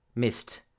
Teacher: S in missed is unvoiced, so the T will also be pronounced.